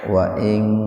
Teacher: Wa ing ifa hakiki, nun mati ketemu dengan kaf secara terpisah atau di lain kata. Jadi betul-betul dibaca samar, tahan dua ketukan.